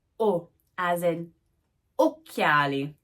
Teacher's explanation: It is semi-open, back, and rounded. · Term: O sound